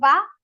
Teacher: So vakar, when we say va, we have to use dantya, teeth, and osth, your lips